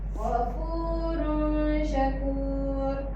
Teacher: Huruf sy bacaan dia mesti dengung dia jadi ghafurun syakur.